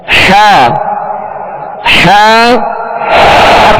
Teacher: आईन हा का एक ही मखर है वो वस्ते हल्क यानी हल्क का दरमियानी हिस्सा